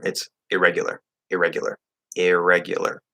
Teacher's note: Okay, you're not making a longer R. If you do that, you're going to sound really weird, like irregular.